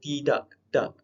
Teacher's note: Udara daripada paru tersekat dan berhenti di glotis. Okey, maksudnya kat sini berhenti, contoh macam perkataan tidak, tak, belakang adalah K. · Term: hentian glotis